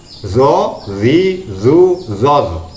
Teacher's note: makhraj ujung lidah dan ujung dua gigi depan atas. Ini makhrajnya huruf dha, huruf dzal dan juga huruf tha, ya.